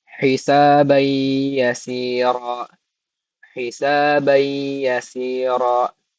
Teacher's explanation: Idgham bigunah ini dibaca dengan mendengung selama 2 harokat. Jadi kita harus mendengungkannya 2 harokat.